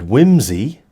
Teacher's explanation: the S is also voiced note that it also lies between two voiced sounds